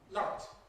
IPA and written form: laɪt (light)